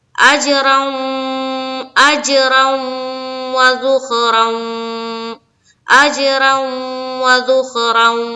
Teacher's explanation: را کو پر رکھتے ہوئے واو میں ملائیں گے، ادغام ناقص کا قاعدہ ہو رہا ہے